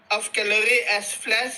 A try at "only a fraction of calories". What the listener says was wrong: No, you did it again. Okay, I'm sorry, but you're not getting it. When you see an S, okay, you have to pronounce it, okay? Only a fraction of calories.